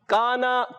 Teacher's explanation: کاف کو باریک رکھیں گے، ایک الف کھینچ کر ادا کریں گے